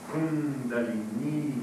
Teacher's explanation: Kundalini, o I fica longo